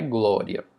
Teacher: Observa que o que veio primeiro foi a semivogal, depois veio a vogal, o i como semivogal e o a como vogal. Então observe esse som crescendo. · O I veio primeiro, que é mais baixo, para depois o A, que é mais alto, vir logo depois. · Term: ditongo crescente